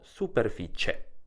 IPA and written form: superfit͡ʃe (superfiCIE)